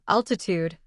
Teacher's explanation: altitude has stress on the first syllable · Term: stress patterns